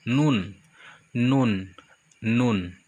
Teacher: NUN tempat keluarnya dari ujung lidah